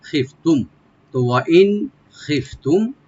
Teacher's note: খিফতুম খি বলবো আর ফাটাকে আমরা সাকিন করবো না, খিফতুম। আর মিম সাকিন এখানে আমরা এজাহার করব, এখানে গুন্না হবে না